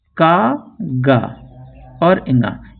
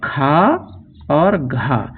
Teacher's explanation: का, गा और इंगा ये अल्पप्राण हैं, और खा और घा ये महाप्राण ध्वनियां होती हैं